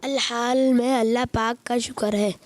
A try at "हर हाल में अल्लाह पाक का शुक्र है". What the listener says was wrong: अल हाल नहीं है, हर हाल में अल्लाह पाक का शुक्र है। हर हाल में अल्लाह पाक का शुक्र है।